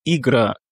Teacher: Ici, l'accentuation se situe sur le A, en fin de mot.